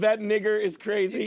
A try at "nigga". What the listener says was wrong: Don't say it with such a hard R. Nigga. Nighhhh. Nigga. Nigga. Nigga.